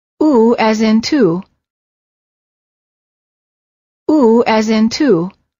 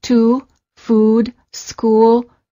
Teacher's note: the lips are tense and rounded as if you're blowing a balloon and the tongue is slightly tense and raised High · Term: ooh sound